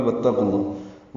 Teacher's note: واو کو تا سے ملانا ہے، یہ قاف پر ہے اور لام اس میں جلالہ بھی پر ہے